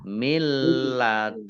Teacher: Nun sukun bertemu dengan huruf lam, bacaan idgham bila gunnah. Idgham masuk, bi dengan la tidak, gunnah mendengung. · Nun sukun bertemu dengan huruf kaf. Bacaan ikhfa dibaca samar-samar.